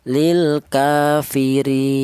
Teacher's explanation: Boleh juga dibaca tawas yaitu sedang yaitu dua alif atau empat harakat